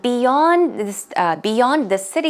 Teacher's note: beyond the stress goes on the second syllable